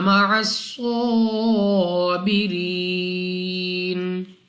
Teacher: स्वाद मुस्तालिया में से है, मोटा पढ़ेंगे। रा के नीचे जेर, रा को बारीक पढ़ेंगे।